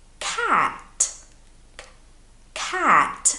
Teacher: the sound a lot of the time comes from the back of your throat the back of your mouth